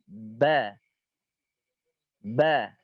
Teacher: Ba yang mana bertemunya antara bibir bawah dan bibir atas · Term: huruf ba